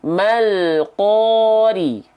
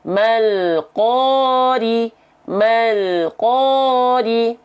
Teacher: Perhatikan lamnya. Dia mengalir sedikit suaranya tanpa mantul. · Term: tawasud